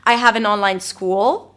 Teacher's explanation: I went up, but it was not the end of the sentence.